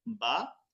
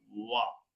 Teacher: বা এবং ওয়াও উভয়টি ঠোঁট থেকে উচ্চারণ হয়, তবে বাটা ঠোঁটের বীজাংশ থেকে ওয়াওটা গোল হয়ে, যেমন বা জবর বা, ওয়াও জবর ওয়া, শুনতে কিন্তু একজনের কাছাকাছি মনে হয়।